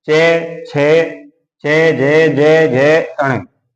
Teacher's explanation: इनका जो उच्चारण स्थान होता है वो होता है तालु